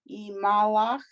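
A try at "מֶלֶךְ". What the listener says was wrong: No, the 3 dots. Me, Melech. The word for king, Melech.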